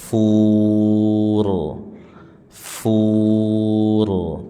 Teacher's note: Fur r ada takrirnya, getarannya dan tebal.